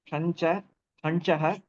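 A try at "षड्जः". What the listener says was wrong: Shadjaha. Jakara should be there. So Shadjaha.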